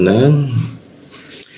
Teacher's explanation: menggunakan ujung lidah ya. Ujung lidah tempelkan ke gigi dia.